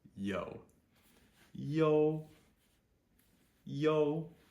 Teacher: ouu is a long o just like the name of the letter o o o and we need to again add that Y sound in front of it